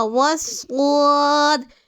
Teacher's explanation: صاد کو پور یعنی موٹا پڑھنا ہے اور واو کو صاد میں ملانا ہے، کیونکہ تشدید والا ورڈ اپنے سے پہلے والے ورڈ سے مل کر پڑھا جاتا ہے، اسی لیے ہم نے واو کو صاد میں ملایا ہے۔